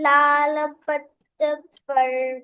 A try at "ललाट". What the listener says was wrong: लल्लाल. लल्लाल नहीं है, लल्लाट है.